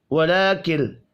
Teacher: لام کے اوپر کھڑی زبر ہے 1 الف کے برابر کھینچ کر پڑھیں گے